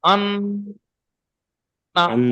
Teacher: এই যে আন বলে আওয়াজটা এক আলিফ পরিমাণ নাকে ধরে রাখতে হচ্ছে।